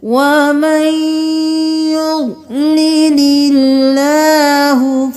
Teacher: اللہ کا لفظ باریک پڑھیں گے کیونکہ اس سے پہلے والے حرف پر زیر ہے